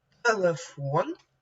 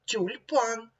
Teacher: предмети телефон тюльпан порівняйте перші звуки в цих словах Т ть в слові телефон твердий приголосний т в слові тюльпан М'який приголосний ть